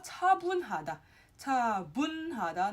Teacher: if it's in the second character spacing or thereafter, it's pronounced more like a B.